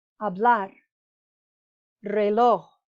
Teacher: the other words that end in a consonant other than nrs the emphasis is on the last syllable